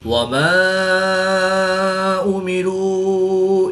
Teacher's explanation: مدہ کے بعد حمزہ دوسرے کلمے میں ہے تو یہاں پر مد منفصل ہوگی، 2 سے 3 الف تک کھینچ کر پڑھیں گے۔